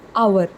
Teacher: the letter H is silent in this particular word. H is silent, and we pronounce it as hour.